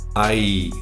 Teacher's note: the I sound is produced in a rising tone, and it is this I sound which is the distress or alarm part.